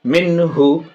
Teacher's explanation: پیش ہو، من ہو، اب دیکھیں نون ساکن اور پھر یا نون ساکن کے بعد ہا، حمزہ ہا میں سے ہا، اس لیے نون ساکن کو بالکل صاف صاف اس کو اظہار کہتے ہیں،